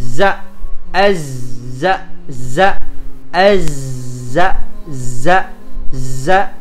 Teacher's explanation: Ketika dia dalam keadaan sukun, dia tidak dikeluarkan nafasnya. Ya, dia hanya dikeluarkan apanya? Desisnya saja. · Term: sofir